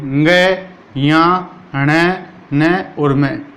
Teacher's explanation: इन सारे व्यंजनों की उत्पत्ति कहाँ से होती है, नाक से होती है। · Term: नासिका